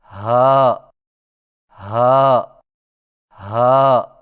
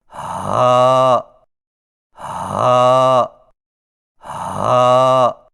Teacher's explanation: ہا کی ادائیگی میں زبان کی جڑ کو حلق کی طرف دبائے بغیر باریک اور بغیر رگڑ کھاتی سانس میں پڑھیں، یعنی ہا ہا ہا۔